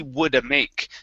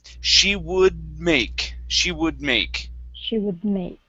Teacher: she woulda make so you wanted you ended that d sound so let's not end the d sound okay and we're going to move that right into the m